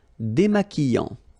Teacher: Final T not pronounced.